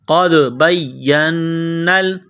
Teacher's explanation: قاف کو دال کے ساتھ ملانا ہے دال ساکن ہے تو یہاں پر قلقلہ کریں گے